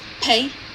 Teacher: A slight h is heard after the explosion of p and before the beginning of the vowel. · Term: aspiration